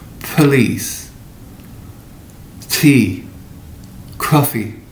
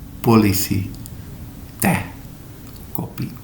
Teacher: P, T, and K are aspirated in English. So you hear a little puff of breath.